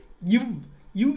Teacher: கீழ் இதழும் மேல்வாய் பல்லும் இணைவதால் பிறக்கும் எழுத்து இவ் ஃப் என்ற எழுத்தை உச்சரிக்கும் போதே உங்களுக்கு தெரியும் கீழ் இதழும் மேல்வாய்